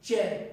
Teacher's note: मुंह के अंदर जो जीभ है इस तालु से टच होगी, च बोलते समय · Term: तालव्य